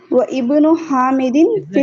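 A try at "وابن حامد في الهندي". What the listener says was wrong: حمزہ پروناؤنس نہیں کریں گے, یہ حمزۃ الوصل ہے. اس والے حمزہ کو پروناؤنس کیا ہے جی, اس حمزہ کو کیوں پروناؤنس کیا ہے؟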